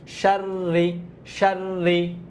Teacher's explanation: শিন র জবর সার, তাজদিদুল হরফ হওয়ার কারণে একবার সার, আবার রজের রি